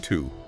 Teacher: The standard full pronunciation is to, with a long ooh sound.